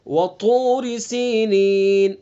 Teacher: ता को पुर पढ़ेंगे चूंकि हरूफ मुस्तालिया में से है